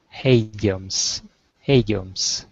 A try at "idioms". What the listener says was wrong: so remember it there's no h sound it's just a short I so idioms idioms